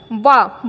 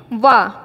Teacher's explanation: इसीलिए वा जो होता है उसका उच्चारण स्थान क्या होता है दंत ओष्ठ